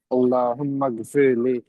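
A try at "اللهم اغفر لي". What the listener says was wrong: মাগফিরলি একটা ইয়া আছে, হ্যাঁ?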